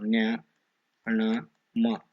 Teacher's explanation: ಮೂಗಿನಿಂದ ಸಹಾಯದಿಂದ ಉಚ್ಚರಿಸಲ್ಪಡುವ ಅಕ್ಷರಗಳು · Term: ಅನುನಾಸಿಕಗಳು